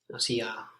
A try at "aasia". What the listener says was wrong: Not Asia, but Asia. So at the beginning, two A's. Asia, Asia.